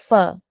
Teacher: फ़ का मखरज है कि जब ऊपर के दोनों दाँत का सिरा, जो हमारे फ्रंट 2 टूथ है ना, उसका वो हमारा नीचे के होंठों के अंदर गीले हिस्से पर लगता है, तो हर्फ फ अदा होता है। अब बोल के देखिए फ, ऊपर का जो हमारा 2 टूथ है ना, वो हमारे होंठों पे लगेगा, ठीक है?